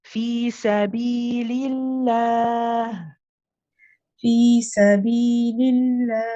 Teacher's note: If you're stopping here, then you are putting a sukoon or a jazm on the ha, and again you pronounce it with, you join the ha at the end and you let it run. It's a rahawa letter. It's one that you keep running for a bit.